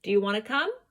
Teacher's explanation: My voice goes up. Do you hear my pitch rising?